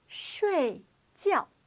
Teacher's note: both of these syllables have a fourth or falling tone